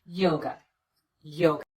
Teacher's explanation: the second syllable is unstressed we replace the letter A with the unstressed vowel the uh sound and we get away from that syllable as quickly as we